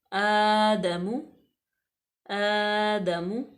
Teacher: حمزہ کے اوپر کھڑی زبر ہے تو اس کو ہم تھوڑا سا کھینچیں گے جتنا الف مدہ کو کھینچتے ہیں